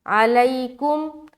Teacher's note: علیکم، عین نکالنا ہے، ع ع ع، اس کے بعد لی، یا ساکن سے پہلے زبر یا لین کا قاعدہ ہو رہا ہے، نرمی کے ساتھ جلد ادا کرنا ہے